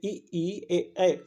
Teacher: जीभ का आगे वाला भाग यूज हो रहा है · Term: अग्र स्वर